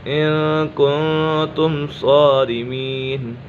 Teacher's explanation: میم ساکن میں اظہار شفوی ہوگا، یعنی گنہ نہیں کریں گے